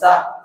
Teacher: সামনের নিচের দাঁতের আগা থেকে শীষ সহ পাতলাভাবে আদায় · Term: সিন